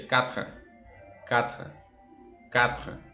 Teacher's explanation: Pero este sonido que sentimos al final, que lo vemos como una E, no es como tal una E. Es básicamente el sonido de la R con la T. Las consonantes también tienen sonido, pero en una medida mínima.